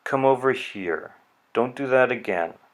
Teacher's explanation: You can hear, I'm not even exaggerating it very much, you can hear the pitch goes lower near the end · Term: falling intonation